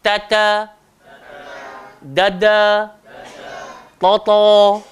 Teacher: Hujung lidah pergi belakang gigi atas. Huruf ta nipis, huruf dal sederhana, huruf to tebal.